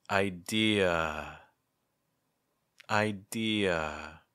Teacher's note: this schwa sound in an open position at the end of some words